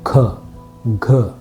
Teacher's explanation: K, blade of the tongue against the upper gum ridge, the hard palate.